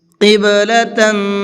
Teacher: قِبْلَةً، قب کے با کے اندر قلقلہ کریں گے اور تن کے اندر اخفا کریں گے، اس لیے کہ تا کے اوپر تنوین ہے اور تنوین کے بعد میں پھر ایک اور تا آ رہا ہے۔